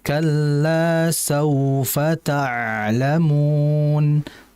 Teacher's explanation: huruf ain itu merupakan huruf yang keluar dari tengah tenggorokan dan dia memiliki sifat tawas harus dialirkan.